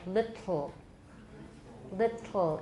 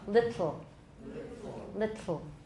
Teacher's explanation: you can hear the kind of slobbery air coming out the side. It'll get a little bit, there's a little bit of saliva coming out there sometimes. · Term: lateral plosion